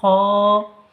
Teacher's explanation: গলার শেষ অংশ হইতে উচ্চারিত হয় খ দাল জিভের আগা সামনের উপরের দুই দাঁতের গোড়ার সাথে লাগিয়ে